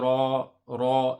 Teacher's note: So the ra has a mud. We stretch for 2 harakat, and also it's a heavy letter in this instance.